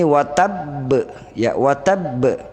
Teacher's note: maka huruf Qalqalah itu dipantulkan dibunyikan seperti ini watab ya watab ya jangan baca Hai terkadang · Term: Qalqalah kubra